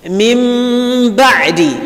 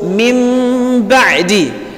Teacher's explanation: As though there is no Ba, there is no Nun Sukun there. So we've changed the Nun Sukun from its original shape, which is Nun, and replaced as though we are replacing it with Mim. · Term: Al-Iqlab